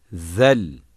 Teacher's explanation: dilin ucu üst dişlerin başlarından biraz dışarı çıkarmak suretiyle okunur ince aşikar ve yumuşak okunur ra hilale benzer şekilde bir harftir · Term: Peltek